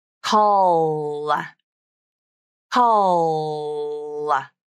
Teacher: Bring the tongue tip up at the end of the dark L and add the vowel to the end of the word